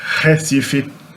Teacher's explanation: So at the end of a syllable, the R varies from region to region, but the beginning of the syllable, most Brazilians nowadays pronounce the R at the beginning of the word as an H in English